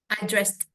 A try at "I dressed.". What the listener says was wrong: Ada sound kayak D tapi ketahan gitu soundnya.